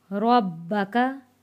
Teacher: बा के ऊपर तशदीद है, बा 2 बार पढ़ा जाएगा।